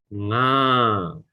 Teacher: So if you close, nga, you cannot say nga sound because it's coming from the nose as well as from the mouth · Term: nasal sound